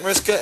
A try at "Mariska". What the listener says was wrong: Mariska. Mariska. Add the H.